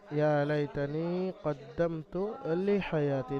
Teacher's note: এখানে কদ্দাম গুণা হবে না, কদ্দামতু তাড়াতাড়ি পড়তে হবে।